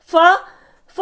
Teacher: फा भी ओष्ठ व्यंजन है